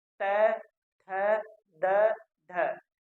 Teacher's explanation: आपके मुख में जो जीवा है वह दांत को स्पर्श करेगी